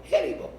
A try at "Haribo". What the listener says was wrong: Why you got an accent now? That's a Chinese accent. You rolled your R.